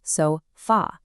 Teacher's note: It also ends in a vowel, but the stress is on the last syllable.